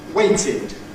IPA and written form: ˈweɪtɪd (waited)